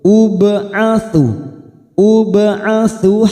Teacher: ba sukun qalqalah sugroh karena mati asli di tengah-tengah kalimat, kita pantulkan